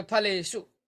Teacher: सप्तमी बहुवचन में जो शु होगा, ठीक है, वह मूर्धन्य शकार होगा। और कब होगा, जब जब ए रहेगा आगे।